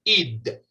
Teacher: En español nuestra D es nuestra lengua tocando los dientes superiores, mientras que en inglés esa D es la punta de la lengua tocando un poquito más atrás de nuestros dientes superiores, en el paladar